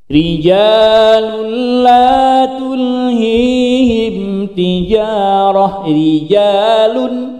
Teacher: huruf ro yang dia berharokat kasroh, maka dia harus dibaca tipis atau tarqiq